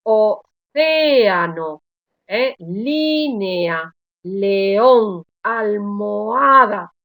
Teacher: Todas estas vocales abiertas se separan. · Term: hiato